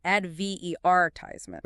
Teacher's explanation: British English stresses the second syllable